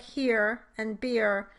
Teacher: In truth, the real pronunciation of this vowel might be somewhere in between the e and ih vowels. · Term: rhotic diphthong